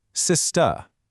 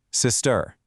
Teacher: The difference is super subtle and it's all at the end of the word. In the UK, it's often a softer finish, kind of like sister, but over in the US, you get that harder R sound, sister.